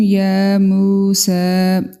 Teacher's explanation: یا کے اوپر کھڑی زبر، میم کے ساتھ واو مدہ اور سین کے اوپر کھڑی زبر، تینوں کو ہم ایک ایک الف کے برابر لمبا کریں گے